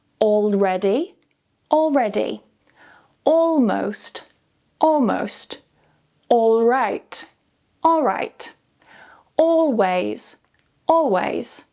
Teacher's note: L-elision happens when the L sound, especially the dark L that appears after the vowel OR, is dropped completely in quick or casual speech. This means that instead of saying all clearly, the L simply disappears when you say the word quickly.